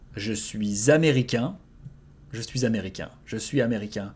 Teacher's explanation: you need to make the liaison between the S and the A.